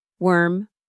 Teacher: For worm with the e sound, your lips are almost neutral. They're not rounded, they're not spread wide. Your tongue sits in the middle of your mouth, relaxed.